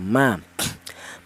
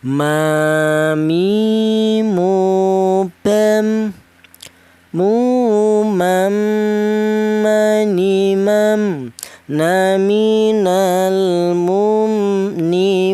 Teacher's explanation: Huruf mim ini keluarnya huruf berasal dari kedua bibir yang rapat. Kita bilang ma, kedua bibir kita rapat dulu ya, ma.